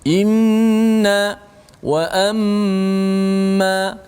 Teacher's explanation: sepatutnya selepas hamzah terus nun, jangan tunggu lama-lama